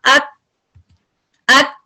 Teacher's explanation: तो पहले सिर्फ शिद्दा है और उसके बाद हम्स है। शिद्दा कैसे है, आप जब लेटर को पढ़ते हैं, हमजा फतह काफ अक अक।